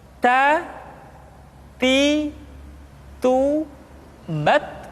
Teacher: huruf Ta ketika diucapkan terdengar ada nafas yang mengalir, atau dalam ilmu tajwid disebut dengan sifat al-hamas.